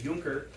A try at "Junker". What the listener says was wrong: It's not pronounced Junker. Oh yeah, in German the J makes a Y sound.